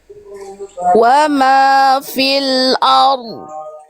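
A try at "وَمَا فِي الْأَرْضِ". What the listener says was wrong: Bunyi yang saya dengar itu ro-nya yang kuat. Nanti tinggal dilatih bunyi dotnya belum sefasih yang sebelum-sebelumnya. Karena memang ini agak lebih sulit, namanya ada iltiqo usakinain.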